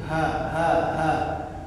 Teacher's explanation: ha dari pangkalnya kerongkongan nih, bukan di tengah ya, dari sini.